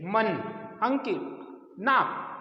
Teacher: इसका उच्चारण करते समय नासिका से आवाज आएगी, मुख से नहीं आएगी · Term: अनुस्वार